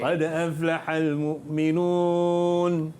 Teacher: Qad aflah, dal tu dia menggelusur sikit ke depan. Kita sembunyi sikit.